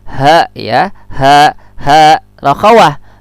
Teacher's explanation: Ha ini juga rakhawah dan makhrajul hurufnya adalah tenggorokan bagian bawah.